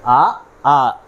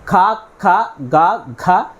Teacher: కంఠ్యాలు కంఠ్యాలు అంటే కంఠం నుంచి పుట్టే అక్షరాలన్నిటిని మనం కంఠ్యాలు అని పిలుస్తాం కంఠం నుంచి ఉచ్చరించబడే అక్షరాలన్నింటిని కంఠ్యాలు అని పిలుస్తారు ఇవి మన అచ్చుల్లో వచ్చేసరికి అ ఆ ఇక హల్లుల్లోకి వచ్చేసరికి క వర్గం